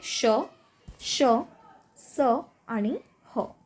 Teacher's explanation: उच्चारण करताना मुखातून उष्ण हवा बाहेर पडते म्हणून याला काय म्हणतात उष्म. तर ते कोणते श श स आणि ह.